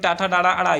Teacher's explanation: ट ठ ड ड ड ये वर्ग होता है ये मूर्धा से होगा